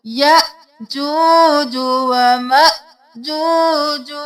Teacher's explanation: हमजा है झटका देना है दोनों जगह